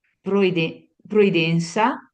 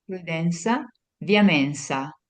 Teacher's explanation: c'è una e aperta